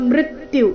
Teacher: ಮೃತ್ಯು ಮೃ ಮೇಲೆ ಆಘಾತ